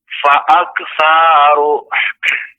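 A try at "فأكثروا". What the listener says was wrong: Sanya pendek ya Bapak.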